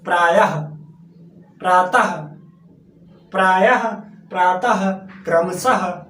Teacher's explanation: अब हम बात करते हैं विसर्ग, इसमें हल्का हा, इसमें क्या होता है, हल्का सा हा मतलब हमारे मुंह से निकलता है।